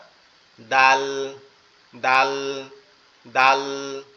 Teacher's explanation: এই দালটাও আমাদের জিহ্বার আগা উপরের দাঁতের গোড়ার সঙ্গে লেগে উচ্চারিত হবে